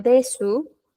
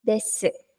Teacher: Porque vimos regla de pronunciación de que la U al final, en una palabra que termine con alguna sílaba que sea de la U, esta U pierde fuerza. Entonces, en lugar de pronunciarlo como de su, pronunciamos des. Muy suave, muy sutil la U, des. O des, está bien, des.